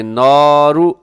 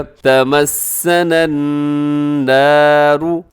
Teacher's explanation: تمسنا النار، اسے ایسے نہیں پڑھنا آپ نے نارو، اکثر لوگ کیا کرتے ہیں کہ نارو ایسے نون الف دونوں کو موٹا کر دیتے ہیں، تو آپ نے اس کو بالکل باریک رکھنا ہے، آگے صرف را کو اپنے موٹا کرنا ہے